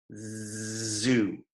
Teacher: Um voice sound é tipo Z, zu. Faz a garganta vibrar, faz vibração na garganta.